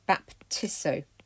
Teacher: So the future of baptisto is baptisso, where that horrible ZS has contracted down now into a single S